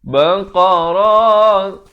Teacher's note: Qa ni makhrajnya qaf, makhraj di pangkal lidah kita.